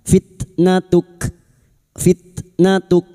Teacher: Huruf kaf juga yang dibaca wakaf maka sifat hamesnya harus terasa. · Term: sifat hamasnya